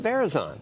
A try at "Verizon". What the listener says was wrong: Verizon. Emphasis on the wrong syllable.